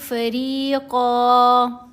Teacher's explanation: قاف کے اوپر 2 زبر ہیں، ساتھ الف ہے، آگے آیت مکمل ہو گئی، یہ جو سرکل ہے یہ آیت کی علامت ہے۔ جب ہم یہاں پر وقف کریں گے تو 1 زبر پڑی جائے گی اور 1 زبر خاموش ہو جائے گی۔ فریقاً نہیں پڑھنا، فریق نہیں پڑھنا، بلکہ فریقا۔